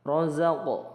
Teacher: qof sukun qof sukun ini dipantulkan